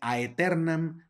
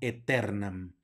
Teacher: tenemos una ae que es un diptongo y suena como e